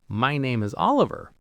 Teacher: Even though it's a statement, the rising intonation makes it sound like you're seeking validation, like you're not sure if that's really your name.